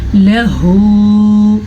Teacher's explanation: ہا الٹا پیش ہو. اس کی آواز سینے کے اندر سے نکلے گی. گلے کا آخری حصہ، حلق کا آخری حصہ